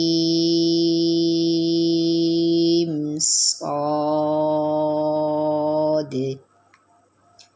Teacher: صاد سیٹی والا حرف ہے اور موٹا حرف ہے